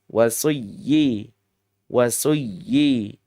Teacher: Padahal ini bukan gunnah, bukan dengung, enggak boleh. Idgham iya, masuk iya, tapi enggak boleh gunnah. Dan harus disertai dengan nabar atau di kata lain tamkin ya.